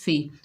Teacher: फा को जब अदा करेंगे ऊपर वाले दांतों के किनारे नीचे वाले होंठ के शक्कम में लगाएंगे।